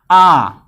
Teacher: आ, देखिए आ कहाँ से आ रहा है, जीभ के पिछले भाग से उच्चारण हो रहा है ना, तो आप लिखिए आ। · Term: पश्च स्वर